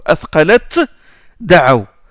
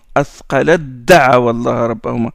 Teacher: Il y a le ta, il y a da juste après, donc on fait une élision.